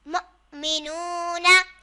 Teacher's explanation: यहाँ भी हमज़ा साकिन आ रहा है तो हमें झटका देकर पढ़ना है और वाव साकिन से पहले पेश आ रहा है तो वाव मद्दा होगा